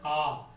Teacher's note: विवृत मतलब पूरा मुंह खुलता है। पूरा मुंह किसमें खुलेगा, आ, जोर से बोलते हैं आ, तो ये पूरा मुंह खुला आ, ये हो गए आ।